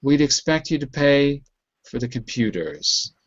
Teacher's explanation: So you can hear my voice drops on computers.